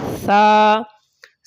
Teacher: جب ثا بولیں گے تو زبان کو نوک سے لگا کر ہلکا سا باہر نکال دیں گے